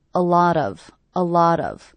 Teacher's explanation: I hear these three words as one unit. A lot of. A lot of with the stress happening on the middle word.